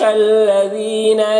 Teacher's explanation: لذین دال کو باریک پڑھنا ہے، اور یہاں پر یا مدہ ہے، اسے ایک الف کے برابر کھینچ کر پڑھیں گے۔